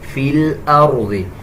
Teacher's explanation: اس را کو پر یعنی موٹا پڑھا جائے گا